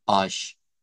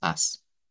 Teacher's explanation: O sea, en portugués europeo suena como ash, pero aquí es as.